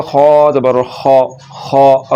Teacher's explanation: خا اور طا یہ دونوں حروف مستعاریہ میں سے ہے، تو ان دونوں حرفوں کو پر یعنی کہ موٹا کر کے پڑھیں گے